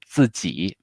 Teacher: So fourth tone, third tone